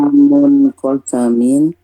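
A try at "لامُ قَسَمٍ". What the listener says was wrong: Nggak pakai tanwin munnya bun, diidofatkan. Lamu kosamin.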